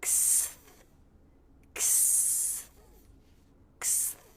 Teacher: Now we have the K, S, and TH sounds together. They're all unvoiced, so we're just passing air through, no engagement of the vocal cords. The K. Tongue tip stays where it was for the I, lightly touching behind the bottom front teeth. · The back part of the tongue reaches up and touches the soft palate here, the back part of the roof of the mouth, and pulls away.